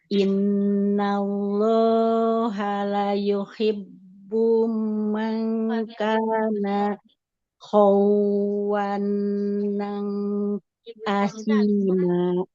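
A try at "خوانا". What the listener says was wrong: Jangan khawanan. Di sini kan nunnya tanpa tasdid Ibu ya, maka tidak usah kita tahan. Mangkana khawanan asima.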